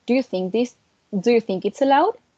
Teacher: do you think going down and then it's allowed it goes up